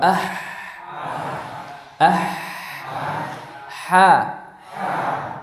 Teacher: Lidah dalam bertemu dengan dinding tenggorokan, atau keduanya, posisi keduanya ini adalah di wasatul halaq, bagian tengah tenggorokan. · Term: huruf ha